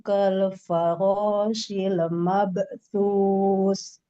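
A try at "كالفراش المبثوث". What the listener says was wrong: Mabesus. Nah ini kalau-kolahnya jangan kaku, jangan jeda. Kal farashil mabesus.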